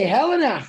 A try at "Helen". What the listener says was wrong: It's Helen. Don't worry about the E at the end. It's Helen.